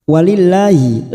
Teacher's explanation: lam jalalah yang didahului kasroh kita baca tarkik